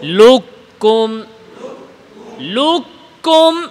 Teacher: এখানে কফ কাফ হয়ে যাবে, ইদগাম কামিল হবে